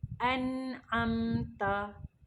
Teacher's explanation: Makhraj huruf nun, angkat hujung lidah, tekankan dekat lelangit. Jadi bila dah tekan betul-betul, dia akan jadi bunyi nun mati yang jelas.